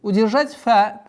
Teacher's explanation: Удержать фа, так как фрикативный звук, если впереди звука со свистом стоит фрикативный фа, нужно максимально четко договаривать.